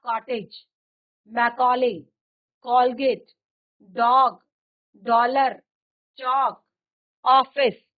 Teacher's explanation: आ और ओ के बीच की ध्वनि है